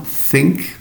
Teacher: the sharp voiceless one think put your tongue between your teeth